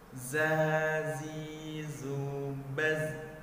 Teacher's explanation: huruf zai juga merupakan huruf shafir di mana hurufnya memiliki desiran yang kuat dan suaranya agak membesar